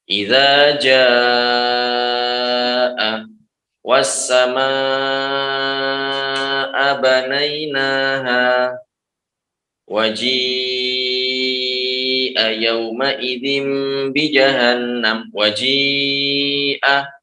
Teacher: Panjangnya ini 6 atau 5 harokat. Jadi harus dibaca panjang 6 atau 5 harokat. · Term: mad wajib mutasil